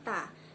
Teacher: bunyi K pada call yang termasuk konsonan velar dan berposisi belakang diujarkan dengan artikulasi lebih ke depan menjadi T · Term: pengedepanan